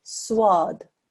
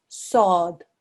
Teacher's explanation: there is no wow in there whatsoever so it's quite important that you don't introduce a wow sound into it you mustn't say swad the Arabic pronunciation is sword again here